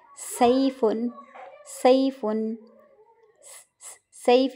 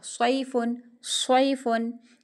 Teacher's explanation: सैफुन का मतलब होगा तलवार और आगे देखिए स्वाद के साथ है सफुन सफुन इसका मतलब होता है मौस्म गरमा है तो दोनों हरूफ सुफीरिया ही है ना सीटी वाले हरूफ है ठीक है और हम आवाज भी लगते हैं एक ही मखरज भी इन दोनों का सेम है ठीक है लेकिन क्या है कि सीन बारीक है और स्वाद मोटा है